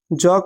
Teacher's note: ज का उच्चारण स्थान जो है तालु है